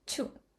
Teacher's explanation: Initial Ch is strongly aspirated